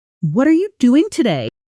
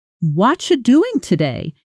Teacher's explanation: The what are you collapses into something closer to watcha. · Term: connected speech